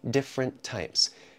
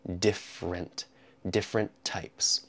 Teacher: we connect the two t sounds together